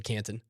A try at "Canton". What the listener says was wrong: You're really leaning into hard T's. Where you used to just go Canton. No, you said Canton. It's also been Canton, Brighton, Thornton.